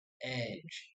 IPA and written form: ɛdʒ (Edge)